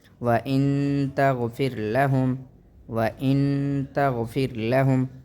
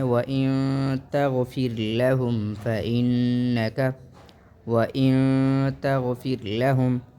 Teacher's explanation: تو اس جگہ اخفا ہوگا، یعنی ہم نون کو چھپا کر پڑھیں گے۔